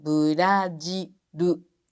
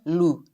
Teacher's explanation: Quando, por exemplo, Brasil termina com ele, pronunciamos com R-U. Brajiru. Não é lu, é ru.